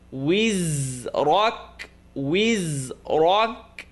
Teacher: The ra is heavy, kaf is light. Wizrak. وَوَضَعْنَا عَنْكَ وِزْرَكَ الذي أنقض ظهرك.